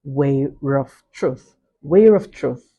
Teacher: where we see the R being inserted in the first word where originally it doesn't have the approximate role. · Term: vowel intrusion